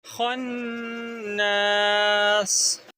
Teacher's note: خا کو آپ نون کے ساتھ ملائیں گے، ٹھیک ہے، اور نون کو تھوڑا سا لمبا کر کے پڑھیں گے